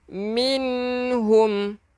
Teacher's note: Nun yang ada tanda mati kena jelaskan.